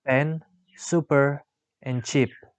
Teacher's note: The description of p is voiceless bilabial stop.